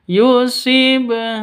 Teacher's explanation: maka cara bacanya harus dipantulkan ke huruf ba-nya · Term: qalqalah